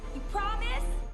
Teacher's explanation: Veja que a palavra you é reduzida para ya. Então, you é como deveria falar e ya é como os nativos falam, às vezes, a palavra você.